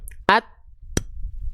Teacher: Ketika dia melepas ujung lidah dari pangkal gigi dari atas, baru keluar percikan nafasnya. Ya, baru dia keluar per percikan percikan nafasnya. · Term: sifat hams